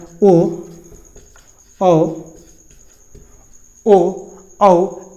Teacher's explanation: और औ को कंठस्थ इसको क्या बोल देते हैं कंठस्थ क्योंकि कंठ और ओट दोनों के मिलने से ओ और ओ का उच्चारण होता है